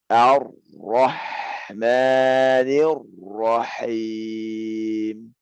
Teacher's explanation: hamasnya ana nampakkan benar-benar. Baru isti'la'nya pada ro juga seperti itu.